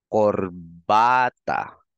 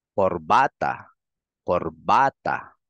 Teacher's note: So, ang kanyang diin or stress nandito sa second to the last.